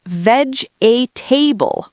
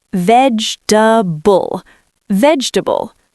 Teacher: Vegetable. The second e is dead.